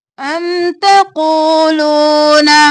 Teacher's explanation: قاف موٹا واو کو کھینچا واو مدہ ہے